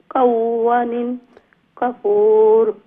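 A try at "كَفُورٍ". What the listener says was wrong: ওয়া লম্বা করবা, ওয়া জোর ওয়া নাই, খাওয়ানিন কাফুর।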